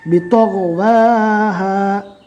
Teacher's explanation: تو کو پور اور غین کو بھی پور پڑھیں گے،